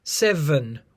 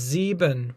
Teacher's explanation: in English, nowadays we pronounce it as seven with a V, whereas German has sieben with a B. If you just change the B to a V, obviously it's the same word.